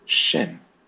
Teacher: when you say the letter Shin, your tongue has to rise to the top palate of your mouth in order to make that sound audible